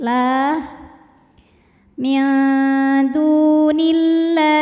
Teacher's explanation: Lam pada lafaz Allah atau lam jalalah dibunyikan secara tarqiq karena huruf sebelumnya kasrah, maka bunyinya tipis